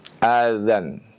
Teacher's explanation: huruf zal jangan kita naikkan pangkal lidahnya sehingga menjadi dha